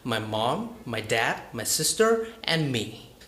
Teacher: my voice rises by the word mom dad sister and then falls by the word me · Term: rising and falling intonation